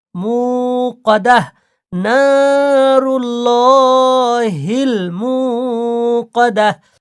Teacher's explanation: মু এক আলিফ টান হবে ওয়া মাদ্দা